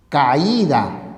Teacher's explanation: ¿Y por qué la secuencia homosilábica se rompe? Porque la mayor fuerza de voz o acento recae en la vocal cerrada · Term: hiato acentual